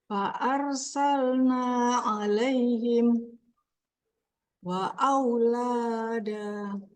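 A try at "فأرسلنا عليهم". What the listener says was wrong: La-nya kepanjangan. Lada. Ya, sambung dua, Bu. Langsung. Alaihim wa. Ini seharusnya tasinya jadi hilang.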